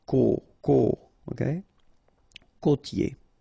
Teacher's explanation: this O, accent circumflex. You tend to insist a little bit more on it, so it's a bit lower.